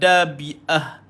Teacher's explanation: Hamzah ini duduknya di pangkal korongkong.